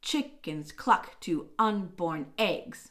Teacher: all of these final feet are truncated they're missing the last unstressed beat of the troche